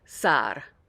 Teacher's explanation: you want a long a sound in the middle and then there's a little tongue flip at the end with that R